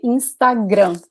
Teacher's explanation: We say Instagram. Like the emphasis in the last syllable.